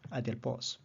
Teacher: The accent is oxus, it's sharp, acute, and it's on the Ultima.